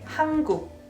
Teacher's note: 한국, Korean, I pronounce N as NG.